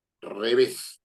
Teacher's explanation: tengo dos sílabas, re y ves. La fuerza de voz está en ves. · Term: palabra aguda